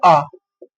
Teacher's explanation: मुख अधिक खुल गया, बोलेंगे आ तो पूरा खुल गया मुंह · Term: विव्रत स्वर